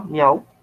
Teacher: la voz miau es una sola sílaba, es monosílaba, miau, y tiene vocal cerrada, vocal abierta, vocal cerrada y se forma el triptongo